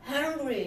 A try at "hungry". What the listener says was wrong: I like that. I heard the pressure.